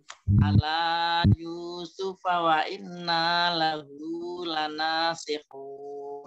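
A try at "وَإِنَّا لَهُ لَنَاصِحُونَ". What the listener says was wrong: Bunya panjang. Lahu. Lahu.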